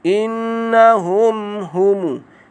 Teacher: Mim mati bertemu dengan hamzah, iaitu izhar syafawi, dibaca dengan jelas dan terang tanpa dengung.